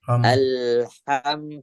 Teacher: ha biarkan dia keluar desisnya dulu atau nafasnya dulu alham jangan ditahan Al kayak orang habis minum terus kehausan banget